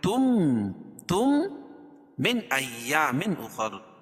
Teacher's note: تنوین کے بعد ادغام مال غنہ کے 4 حرفوں میں سے میم آ جائے گی تو یہ غنہ کر کے پڑھیں گے